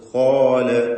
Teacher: അവസ്ഥ എന്നുവെച്ചാൽ ആ ദീർഘാക്ഷരമായ അലിഫിലും തഫ്ഹീം നിലനിൽക്കുന്നു എന്നതുകൊണ്ടാണ് ഇവിടെ അതാണ് സംഭവിച്ചിട്ടുള്ളത് കാല എന്ന് പൂർണമായും തഫ്ഹീം ചെയ്ത് ദീർഘത്തോടെ ആ ദീർഘത്തിലും തഫ് നിലനിർത്തിക്കൊണ്ടുവരുന്നു